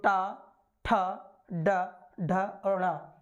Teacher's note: तो मूर्धा से टा वर्ग का उच्चारण होता है।